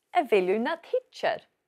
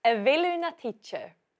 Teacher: Do also causes lenition, which is why we say hichir